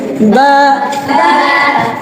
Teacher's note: স্বাভাবিক দুই ঠোটের ভেজা অংশ থেকে। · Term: বা হরফ